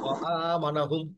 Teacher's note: এটা কিন্তু আইন না, আ পড়তে হবে। ও আ, গলা ছেড়ে দিয়ে আসবে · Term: মাদ্দে বদল